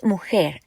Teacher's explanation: Mujer means woman, and the stress falls on the last syllable.